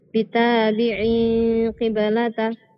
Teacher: عين تنوين بالكسر مخفى عند القاف المكسورة بغنى حركتين